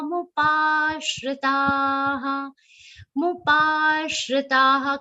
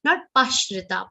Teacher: Mupashritaha. Complete the long pa sound and then give a aghat of sh. Not pashrita.